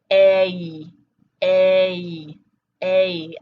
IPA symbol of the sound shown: eɪ